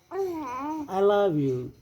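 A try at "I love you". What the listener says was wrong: దానికి దీర్ఘం లేదు పెద్దగా వద్దు చిన్నది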